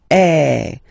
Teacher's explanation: the sound that you will have to produce is eh. So it's really open. I mean, the sound is really open, and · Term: accent grave